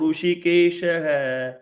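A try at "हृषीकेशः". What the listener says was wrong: ऋषिकेशः is not that. Rishi. She is Dirgha. एवमुक्तो ऋषिकेशः गुडाकेशेन भारत.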